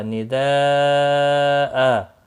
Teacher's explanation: وقف کی صورت میں یہاں تنوین کو بدل کر ایک زبر کے ساتھ وقف ہوگا، الف مدہ بنے گا، اور مد کے ساتھ وقف ہوگا، ایک الف کے برابر کھینچ کر وقف کریں گے، وقف بالابدال ہوگا۔